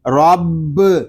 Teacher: را، با زبر رب، را کو پر پڑھیں گے کیونکہ را کے اوپر زبر آ رہا ہے، با مشدد ہے، اس کو جماؤ کے ساتھ ادا کریں گے